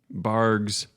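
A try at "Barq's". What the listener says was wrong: Barks. It's not a G, it's a Q. It's Barks.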